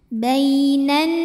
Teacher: ada ya sukun yang sebelumnya baris fathah maka cara bacanya cukup kita lembutkan atau kita lunakan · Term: huruf Lin